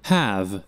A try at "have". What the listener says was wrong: Have. Cái chữ này là âm A. A nhưng mà phải không phải A to miệng mà là A bè miệng. Have. Have. Giống như mình vừa nói vừa cười với mọi người.